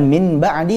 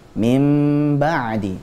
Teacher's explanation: akhirnya dibaca mim ba'di Nun sukunnya dirubah menjadi mim sukun ketika bertemu dengan huruf ba sudah begitu digunahkan lagi dengan tempo yang dipanjangkan bukan Min ba'di